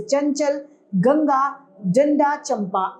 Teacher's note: उच्चारण में केवल वायु नाक से निकलती है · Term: अनुस्वार